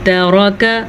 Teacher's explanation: را کو پر پڑھ لیجیے گا، را پہ زبر ہے، تا کو باریک پڑھیے گا، کاف کو باریک پڑھیے گا کیونکہ یہ دونوں باریک پڑھے جانے والے حروف ہیں۔